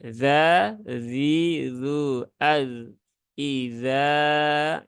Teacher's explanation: Zal itu ujung lidah di gigi seri atas, ya. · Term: huruf zal